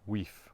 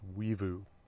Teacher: That's an F sound, but it's a V between vowels , like it is in the plural of those words, weevu,